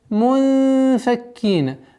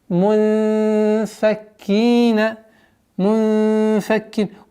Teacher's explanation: Здесь ихфа, мягкая, в размере двух огласовок, назализации.